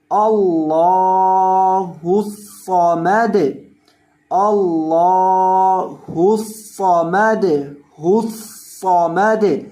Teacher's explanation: حمزہ زبر لام ال، لام کھڑی زبر لا، اللہ، ہا پیش صاد حس، اللہ صاد زبر صا، اللہ الص، میم زبر ما، اللہ الصم، دال پیش دو، اللہ الصمد، اور وقف کی حالت میں دال کو ساکن کرنا ہے وقفاً، اللہ الصمد، اللہ الصمد، الصمد، اور صاد کو آپ نے موٹا کر کے پڑھنا ہے، صاد کو موٹا بھی کرنا ہے اور اس کے اندر سیٹی کی آواز بھی پیدا کر کے پڑھنی ہے، اور آخر سے دال کو ہلانا ہے۔